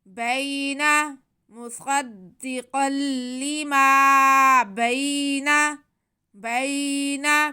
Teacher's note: یا ساکن سے پہلے زبر ہو تو یا لین ہوتی ہے، یہ بھی یا لین ہے، کھینچنا نہیں ہے اسے. آگے نون پہ زبر ہے، اسے بھی بالکل نہیں کھینچنا.